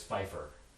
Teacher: The surname spelled that way, which in German is going to be Pfeiffer, begins with a labiodental affricate, which isn't a sound in English. And that's going to be loaned in as just a fricative in English